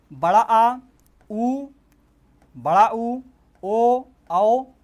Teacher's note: उसी प्रकार से पश्च स्वर में देखिए, जीभ के मतलब जीभ के जो पश्च भाग में जहाँ से जो स्वर उच्चरित होता है उसे बोलते हैं पश्च स्वर, मतलब जीभ के पश्च भाग से जिन स्वरों का उच्चारण होता है उसे बोलते हैं पश्च स्वर